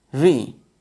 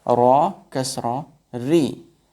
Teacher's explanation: When ra comes with kasra, the sound of it will be light.